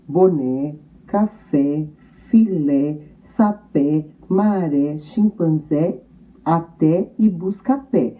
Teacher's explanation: É a última sílaba que está acentuada, portanto, ela é a sílaba tônica em todas as palavras. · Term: palavras oxítonas